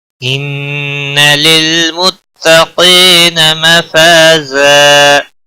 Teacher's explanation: زا تنوین کو بدل کر ایک زبر کے ساتھ پڑھیں گے، وقف بالابدال ہوگا